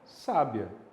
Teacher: E aí você tem o i e o a formando um ditongo crescente